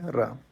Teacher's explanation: र के उच्चारण में जीभ कांपती या लुढ़कती है, जबकि ल पार्श्विक वर्ण है। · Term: प्रकंपित या लुंठित